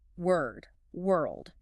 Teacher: It has to touch the alveolar ridge, that bump right behind your teeth, to make that L sound before landing on the D.